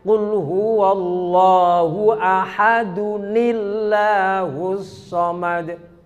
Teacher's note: Kalau diwasolkan menjadi Qul huwallahu ahadunillahus samad. Dihidupkan nunnya. Ahadunillah, bukan ahadulillah.